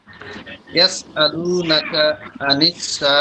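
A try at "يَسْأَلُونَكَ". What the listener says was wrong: নাকা টান হয়ে গেল। আলু নাকা স্বাভাবিক।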